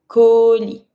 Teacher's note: a package, un colis. Don't pronounce the S.